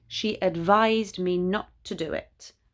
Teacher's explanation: advise with an s is the verb she advised me not to do it and there you have the z sound